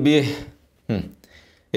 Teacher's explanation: الهاء بعدها يا صغيره هنمدها حركتين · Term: المد صلاه صغرى